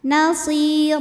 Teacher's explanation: baris tanwin fathah yang kita berhentikan atau kita wakafkan cara bacanya baris duanya ini jadi satu jadi fathah dan panjang dua harakat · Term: Mad iwad